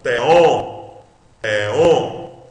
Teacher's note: Olha aqui o sinal de acentuação. Então você lê on mais forte.